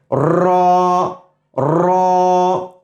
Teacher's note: آپ را جیسے ہی آپ کہیں گے را، آپ دیکھیں گے زبان ایک دفعہ نہیں، اپنے مخرج میں کئی دفعہ جا کر کے ٹکراتی ہیں۔ ٹکرا کر کے یہ آواز، بہت ہی یونیک اور خوبصورت آواز یہاں سے پیدا ہوتی ہے، را را۔